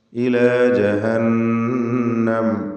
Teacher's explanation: നൂൻ മുഷദ്ദദയെ മണിച്ചുകൊണ്ട് ഉച്ചരിക്കണം.